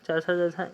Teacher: च वर्ग का उच्चारण तालू से होता है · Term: तालव्य